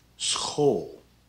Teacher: the sch is like an s and a g sound mixed together